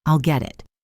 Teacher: The T in get becomes a soft D sound, a flap T, so it sounds like G det.